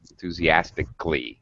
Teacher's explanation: right sometimes the a is pronounced usually it is not enthusiastic i totally dropped the syllable that's called the drop syllable i do not pronounce that vowel sound